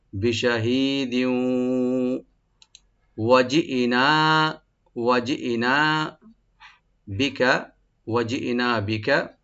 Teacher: দিউ এখানে তানবিনের পর যেহেতু ওয়া আসছে এখানে এদগাম উইথ গুন্না হবে